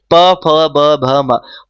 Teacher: हमें हमारे जब भी प वर्ग प फ ब भ म बोला जाता है तो इसमें क्या हो रहा है हमारे होठ एक दूसरे से क्या हो रहे हैं तो टच हो रहे हैं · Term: ओष्ठय